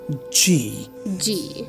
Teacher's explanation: you use the hard palate and the middle of the tongue to pronounce this g